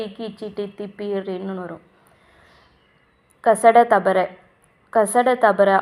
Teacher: வல்லின மெய்யெழுத்துக்கள் ஆறும் மார்ப இடமாகக் கொண்டு பிறக்கின்றன